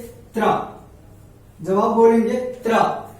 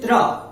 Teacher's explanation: पहले तो बल लगता है जीभ पे, लेकिन बाद में जस्ट 1 सेकेंड में जो जीभ है हमारा वो जाकर के मूर्धा को टच करता है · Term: तालु मूर्धा